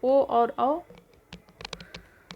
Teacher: तो ओ का उच्चारण कंठ और ओष्ठ दोनों से होता है, ओ औ का कंठ और ओष्ठ दोनों से होगा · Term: कंठोष्ठ